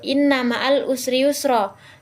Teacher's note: dari kata inna juga itu terdapat guna yaitu agak menekan sedikit sebanyak dua harakat